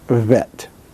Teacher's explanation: the pronunciation that i was taught in the synagogue which is bilabial vet